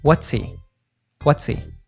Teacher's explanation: we dropped the first letter in pronouns like he, him, her, they, and them.